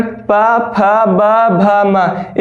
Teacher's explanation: प वर्ण का उच्चारण प, फ, ब, भ, म। इसका उच्चारण जो होती है वो ओष्ठ से होती है